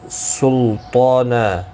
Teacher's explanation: طا حروف مستعلیہ ہے، پر پڑھا جائے گا